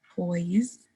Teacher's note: your tongue starts in the alveolar ridge for this T sound